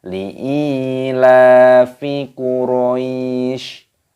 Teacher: Quraisy Perhatikan cara membacanya link ilafi Quraisy di sini lem alifnya alifnya dibaca panjang ada tanda Ya Sukun Mad Thobi'i dipanjangkan dua ketukan